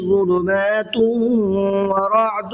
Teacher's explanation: ظلمات، یہاں پہ ادغام کا قاعدہ ہے، تنوین کے بعد میں واو آ رہا ہے تو تھوڑا سا غنہ کر کے پڑھیں گے